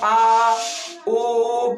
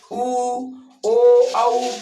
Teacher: जिह्वा की पीछे का भाग सक्रिय रहता है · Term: पश्च स्वर